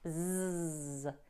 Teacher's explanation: The final S in disguise is voiced, so it sounds like a Z, zzz. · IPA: /zzzzz/